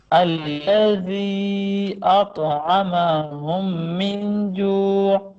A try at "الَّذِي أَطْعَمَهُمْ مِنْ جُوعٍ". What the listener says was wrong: بھائی آپ غنہ صحیح نہیں کرو نا، غنہ تو صحیح کرو. من جوع اس طرح کہو. پھر وہی دیکھو دو غنے ہیں نا. دیکھو ایک غنہ یہ ہے کہ آپ نے اطعمہم، یہ دو میموں کے اندر غنہ کرنا ہے. اطعمہم، ٹھیک ہے. ایک تو یہ آپ نے غنہ کرنا ہے.